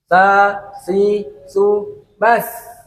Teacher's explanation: ujung lidah dan ujung dua gigi seri pertama atas. Ujung lidah dan ujung dua gigi seri pertama bagian atas.